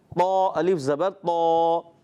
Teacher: تو الف زبر تو موٹا کرنا ہے اور گول نہیں کرنے